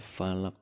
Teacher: Falaq itu dibaca falaq karena qaf adalah huruf qalqalah, jadi memantul.